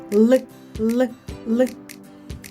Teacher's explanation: Щоб правильно вимовити звук л, потрібно посміхнутися, торкнутися кінчиком язика верхніх зубів і легко вимовити л